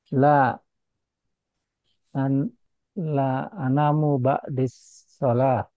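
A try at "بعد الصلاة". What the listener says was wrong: nah, ini bukan ba'di ya ba'da as-salat tentunya untuk jawaban yang terakhir ini mudah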